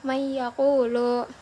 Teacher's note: Nun mati bertemu dengan ya. Di situ pada huruf ya terdapat tasydid yang berfungsi untuk mendengungkan huruf dari nun bertemu dengan ya. Jadi didengungkan gitu, may yaqulu. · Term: idgham bi gunnah